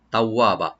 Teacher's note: তাওয়াবা তাটাকে open রাখবেন, ওয়াটাকে double করে open করে পড়বেন